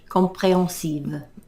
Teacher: They don't pronounce the H.